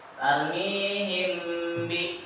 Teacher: Mim sukun bertemu dengan huruf ba disebut dengan hukum bacaan ikhfa syafawi. Cara membacanya dibaca atau ditahan, didengungkan.